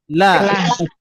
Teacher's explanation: ujung lidah menempel ke langit-langit, gusi gigi seri atas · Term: lam